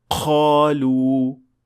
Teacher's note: you hear a hint of kha or ghain along with the sound of qaf